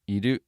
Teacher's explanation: it goes down one more time I do and you do starts low and goes up slightly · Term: pitch accent